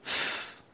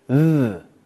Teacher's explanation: placing the tongue between both the top and the bottom rows of teeth. There are only two sounds made in this way, and those are both of the TH sounds. One is voiced, one isn't voiced. · One is voiced, one isn't voiced. The unvoiced sound is th, as in think. The other is voiced, and it's th, as in that.